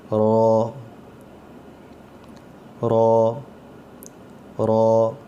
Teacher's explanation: اس کو ہم را نہیں پڑھیں گے, را اور رو میں فرق ہے. رو اس کی آواز موٹی آئے گی اور را میں آواز نارمل نکلتی ہے جیسے ہم اردو میں پڑھتے ہیں, تو اس کی آواز موٹی آنی چاہیے.